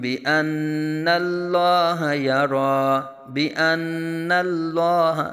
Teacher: لام کو پر پڑھا جائے گا، نون مشدد میں غنہ